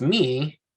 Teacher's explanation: that yod doesn't have its own pronunciation it becomes part of that hirik vowel sound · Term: single vowel sound